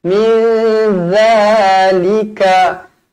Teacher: Nun bertemu zal. Nun kosong bertemu zal, ikhfa hakiki. Dengung dua harokat. Za, pastikan lidah terkeluar sedikit.